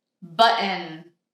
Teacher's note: it might sound like I'm just choking there, but this is a real sound and it's called the glottal stop